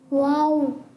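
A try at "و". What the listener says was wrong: वाव खींचना नहीं है, बगैर खींचे. खींचेंगे नहीं? थोड़ा सा तो खींचे ना, मद वाला है. वाव. ऊ लंबा नहीं करेंगे.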